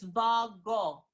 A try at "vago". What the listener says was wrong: Can you just say oh without going to the oo? Still something happened in your tongue. So let that tongue relax, right? And don't pull it back up in your mouth. So it's vago.